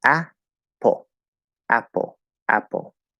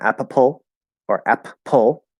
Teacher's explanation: when you see two p's in apple is one p okay and the first syllable is stressed